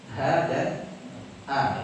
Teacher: Ha huruf yang makhrajnya di mana? Tenggorokan bagian bawah. Bersama dengan huruf hamzah.